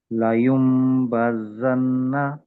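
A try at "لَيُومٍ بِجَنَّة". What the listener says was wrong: చివరిలో ఉన్న నూనెని ఎక్కువసేపు పట్టుకోండి.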